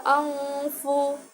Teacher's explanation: bacaan ikhfa hakiki, yaitu nun sukun bertemu dengan huruf fa